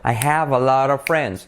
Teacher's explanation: What happens is the T of lot becomes a soft R because there's a vowel right after that